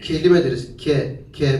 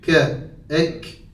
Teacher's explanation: ne vasatul lisana doğru kaydırmaya Yani bu Türkçedeki k harfi değil bizim Türkçedeki K harfimiz biraz daha öndedir